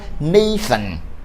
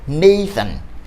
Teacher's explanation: O TH, ele possui um único som, que é um som interdentálico.